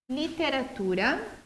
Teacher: Então, literatura, o tu é a sílaba mais forte, penúltima.